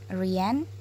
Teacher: It occurs in initial position. It is voiced uvular fricative.